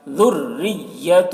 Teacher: ذال کو باریک، ذُرِّيَّةٌ را کو بھی باریک پڑھیں گے